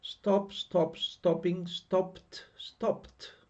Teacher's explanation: final sound p we pronounce it as a t